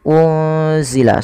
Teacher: menyamarkan nunnya kepada huruf zai, yaitu bacaan ikhfa hakiki